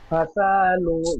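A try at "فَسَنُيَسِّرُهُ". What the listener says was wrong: ফাসা বলে সিনে টান দিচ্ছেন, সিনের উপর যাবার আছে, ফাসানু। ফাসা সিন টান হয়ে যাচ্ছে। এই ফাসানু বলে সিনটা টান হচ্ছে না, ফাসানু। ফাসা সিন টান হয়ে যাচ্ছে, সিন অক্ষরটি খেয়াল করে পড়বেন। ফাসানু,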